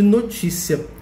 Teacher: notícia é uma palavra paroxítona que tem a penúltima sílaba mais forte